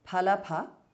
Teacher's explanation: Both bhas and pha are mahapranah.